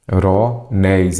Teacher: aqui eu já tenho uma palavra oxítona, a sílaba forte é a última